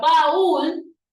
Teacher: baúl es una palabra que lleva la mayor fuerza de voz en la última sílaba, lo que la hace una palabra aguda.